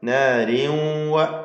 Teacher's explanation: എന്നാൽ നാരിംവ, അത് ഇദ്ഗാം നാഖിസാണ്, ഭാഗികമായി വാവിലേക്ക് ലയിപ്പിച്ച് മണിക്കണം